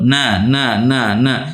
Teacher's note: ujung lidah dengan gusi atas nah jadi huruf nun ini anda perannya di ujung lidah disentuhkan